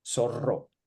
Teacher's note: In zorro, just this is two R's because they're together, so you have to roll them.